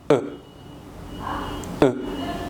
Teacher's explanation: Les lèvres sont détendues. La langue est au milieu, elle est relâchée. C'est un son qui vient du milieu de la bouche. Le son est court et discret. · Pour faire le muet, il faut presque fermer la bouche. Les lèvres sont détendues. La langue est au milieu, elle est relâchée. C'est un son qui vient du milieu de la bouche. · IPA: [ə]